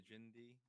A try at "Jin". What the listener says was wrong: Yeah, you just don't pronounce the D. It's just Jin.